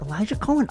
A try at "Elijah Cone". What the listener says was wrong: it is cone c-o-n-e pronounced not cohen